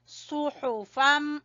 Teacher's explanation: سواد کو پر پڑھیں گے، ہا کو گلے کے درمیان سے نکالیں گے